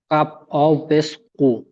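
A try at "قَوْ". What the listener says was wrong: কাপ ওয়াও পেশ কু বলেছেন, ওয়াও পেশ নই, যাবার আছে। কাপ ওয়াও যাবার কাউ।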